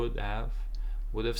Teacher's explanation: would have no h again